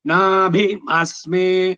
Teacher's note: ಸ್ವರ ಉದಾತಕ್ಕೆ ಹೋಗಿ ಸಡನ್ ಆಗಿ ಅನುದಾತಕ್ಕೆ ಬರಬೇಕು